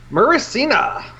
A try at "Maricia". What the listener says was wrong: Or Maricia, I think. By not throwing in extra letters.